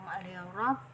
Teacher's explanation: Nah, ro di sini ro tafhim, karena ada ro berharokat fathah, jadi tebal. Nah, cirinya tebal itu pangkal lidah itu lidah bagian dalam kita itu sudah terangkat